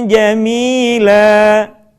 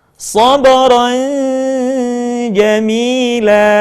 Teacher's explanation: ditahan suaranya kemudian posisi lidah kita sudah berada pada huruf ja